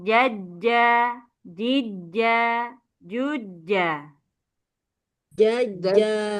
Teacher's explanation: tasdid semua disambung tanpa ada jeda